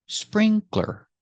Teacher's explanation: Remember, not sprinkler, but 2 syllables. Sprinkler. Put the stress on the first syllable.